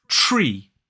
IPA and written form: ʧriː (tree)